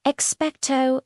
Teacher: In expecto, the O sound is a pure, long O, almost like you're saying the letter O itself.